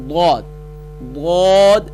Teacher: اس کا مخرج زبان کی کروٹ اور اوپر کے دانتوں کی جڑ سے ادا ہوتا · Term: حروف حافیہ